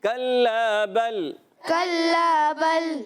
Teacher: کاف کا مخرج زبان کی جڑ اور تالو کا سخت حصہ ایک کاف کا مخرج ہے۔ کلا، لام مشدد ہونے کی وجہ سے ذرا رک کر ادا کریں گے، ایک الف کھینچنا بھی ہے، لام الف زبر لا ہے تو الف مدہ ہے، ایک الف کھینچنا ہے۔